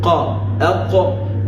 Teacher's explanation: And this qaf has certain characteristics that we call isti'la. There is elevation of the tongue to the smooth palate · the aqsa lisan, the in-depth part of the tongue, has hit the smooth palate